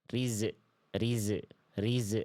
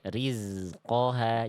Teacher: Seringkali huruf Zai sukun seperti ada suara memantul.